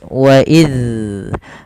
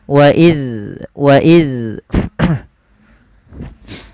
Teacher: Apabila huruf zal terpantul, maka ia termasuk kesalahan karena dia akan membacanya dengan bacaan qalqalah, padahal huruf zal sendiri tidak memiliki pantulan. Agar bacaan tersebut tidak memantul, maka ujung lidah kita tempelkan dengan gigi sari atas. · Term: huruf zal sukun